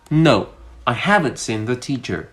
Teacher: I stressed on haven't, which is a contraction. And there's a little bit of stress on seen and on T.